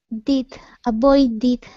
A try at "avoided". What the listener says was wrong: Okay, that first D is good. Now let's do the same thing with the second D.